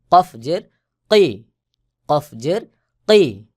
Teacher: কফের আওয়াজ শক্ত করে গোল মত হয়ে উচ্চারণ হবে